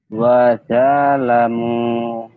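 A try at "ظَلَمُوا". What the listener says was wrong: Ada za. Emangnya orang seberang apa orang Jawa? Orang Jawa kan ada o, ada roro. Dua tuh loro, loro mendut. Ini huruf-huruf yang bunyi o ya.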